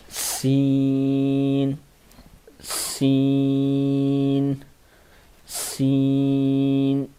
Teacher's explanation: سا میں یہ سا ہے، یہ سین ہے. سین کی آواز صاف ہوتی ہے، سٹی کی آواز نکلتی ہے